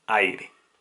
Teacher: El acento está en la vocal abierta A.